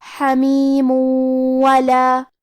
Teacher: کلمت حمیم کے آخری میں میم پہ تنوین پیش ہے، اگر ہم یہ آیت کو اگلی آیت کے ساتھ ملا کے پڑھے تو حرف الواو کلمت ولا حروف الادغام بغنہ میں سے ہے، اور ادغام کا معنی ہے حرف کو حرف میں داخل کرنا، تو ہم یہ تنوین کو واو میں ملا کے غنہ اور تشدید کے ساتھ یہ حکم کو ادا کریں گے۔